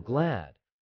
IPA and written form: ɡlæd (glad)